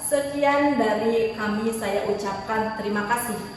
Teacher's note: intonasi menurun di akhir kalimat menunjukkan akhir dari pernyataan kalimat tersebut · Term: intonasi yang menurun